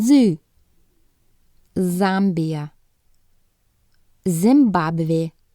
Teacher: keep your teeth together and make a buzzing sound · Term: sound Z